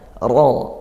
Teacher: rabbika ra-nya tafkhim, maka pangkal lidah kita naikkan